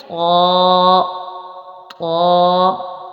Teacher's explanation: اس کا مخرج ہے زبان کی نوک اور اوپر کے دانتوں کی جڑ